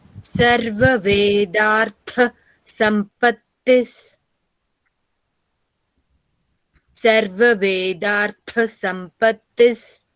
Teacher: Vedartha tha is Mahaprana